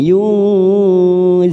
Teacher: Yunzifun nun sukun bertemu zain ikhfa hakiki, 3 ketuk kita samarkan bunyi nun sukun. Yunzifun, fun mat arid sukun 4 harokat kita panjangkan.